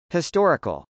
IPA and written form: hɪstˈɔːrɪkəl (historical)